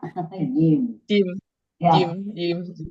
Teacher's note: makhrajnya di tengah lidah ya